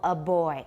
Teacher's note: the vibration went all the way through didn't stop